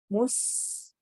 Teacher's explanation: मुस सीन में सीटी वाली आवाज है।